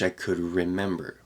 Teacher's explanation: that D before the r gets a little bit weaker